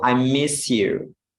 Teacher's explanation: S plus Y, we say SH ya. Ini simbolnya seperti ini, tapi pengucapannya itu SH.